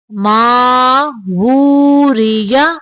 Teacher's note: ماں کی آواز کو منہ سے نکالیں گے، نا کی طرف لے کے نہیں جانا. ماں نہیں پڑھنا.